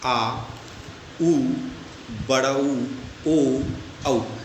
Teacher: जो जीभ के लास्ट यानी पीछे से बोले उसे हम पश्व स्वर कहेंगे